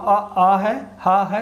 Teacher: आ बोलेंगे, हा बोलेंगे, विसर्ग बोलेंगे, सब ध्वनि आपको कंठ से निकलती हुई प्रतीत होगी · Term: कंठ ध्वनियाँ